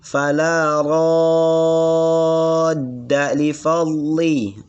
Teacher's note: Ra panjang 6 karena ada mat lazim kalimah musaqqal, kemudian dal ditekan karena ada tasdid.